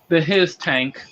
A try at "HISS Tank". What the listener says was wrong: Well, it's supposed to be the tank's name is supposed to be pronounced hiss tank, like an actual snake hissing. Yeah, get it because it's Cobra snakes. Yeah, that's how you're supposed to pronounce his name.